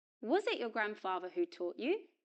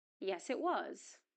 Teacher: the auxiliary verb is pronounced in weak form, was, at the beginning of the question, and in strong form, was, in the short answer.